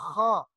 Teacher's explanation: جو موٹا خا، نقطے والا خا ہوتا ہے، اس میں وہ کھنکار کی آواز آتی ہے